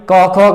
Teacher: ये तो आपको लग गया पता यहां पर कि क ख ग आता है कंठ ध्वनि पे आता है